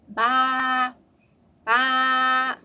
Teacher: when you say the ba ba black sheep, you have a very high voice, right? Very high tone. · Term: Flat tone